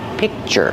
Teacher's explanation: I don't release the k sound. I just make the position and I stop the air.